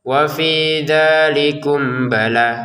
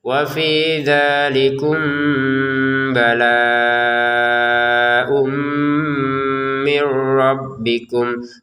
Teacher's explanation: Kalau disambungkan barulah ada namanya samar ya. Mim sukun bertemu ba ini kita baca dengan samar.